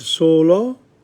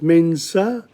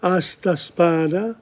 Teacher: S is unvoiced, as in sent